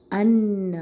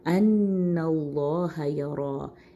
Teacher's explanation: نون کے اوپر بھی شدہ ہے، یہاں پہ بھی ہم نے غنہ دینا ہے